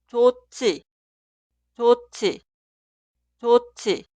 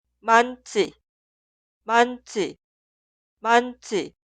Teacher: 히읗 y 즈읒 suenan como un sonido aspirado